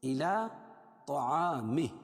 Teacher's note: طا کو موٹا پڑھیں گے کیونکہ حروف مستعلیہ میں سے